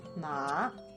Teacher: the third tone is going down and then it hooks up